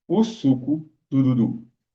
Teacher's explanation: Você conseguiu perceber que você vai falar o suco do Dudu e os seus lábios o tempo inteiro vão estar fazendo o bico